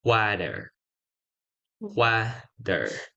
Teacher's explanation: It's not water, it's water. And in American sound, they usually say water, water. The T turn into D. Yes. All right, number 8.